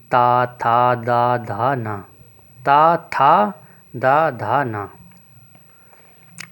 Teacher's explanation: जिन व्यंजनों के उच्चारण के समय जीभ की नोक ऊपरी दांत को स्पर्श करती है उसे दंत व्यंजन कहते हैं।